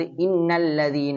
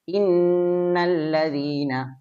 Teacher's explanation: മണിക്കുന്നതിന്റെ അളവ് ഒരു രണ്ട് ഹർഫ് പറയുന്ന സമയം